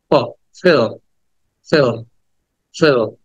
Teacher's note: ফ, ফ বলার সময় কিন্তু মনে রাখতে হয় যে ফ বলার সময় উপরের দাঁত নিচে ঠোঁটের সাথে মিলিয়ে বলতে হয়